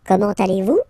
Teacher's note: it's a question, so raise a little bit your voice at the end